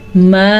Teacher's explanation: اس مد کو 2 سے 3 سیکنڈ تک لمبا کر سکتے ہیں